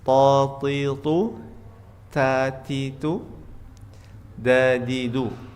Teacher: makhroj huruf tho dal ta itu dari tepi lisan beserta tempat tumbuhnya gigi depan atas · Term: huruf ta, dal, ta